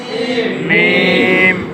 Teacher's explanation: দুই ঠোঁটের শুকনো জায়গা হইতে মিম